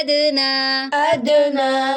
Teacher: अब दाल पे फिर कलकला हो रहा है